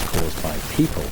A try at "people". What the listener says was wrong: people is most used words, and you should learn the pronunciation of the word people, not pupil, not pupil. So both pronunciation is not correct. So the correct pronunciation will be people, people in Bangladesh, and people in the UK, and people in China. Okay, it's pronounced like that.